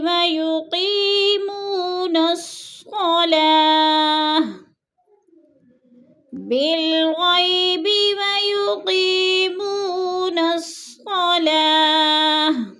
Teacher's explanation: جیسے الذین یؤمنون بالغیب ویقیمون الصلاۃ، بالغیب ویقیمون الصلاۃ، بالغی کو اکثر لمبا کر جاتے ہیں، بالغیبی، غی کو لمبا نہیں کرنا، یالین ہے، اور یقی جو ہے اس کو لمبا کرنا ہے، یا مدہ ہے، منہ کو بھی لمبا کر کے پڑھنا ہے۔